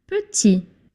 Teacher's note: In the masculine version, you don't pronounce the T at the end because if it's the last letter, you drop the T, you don't pronounce the T.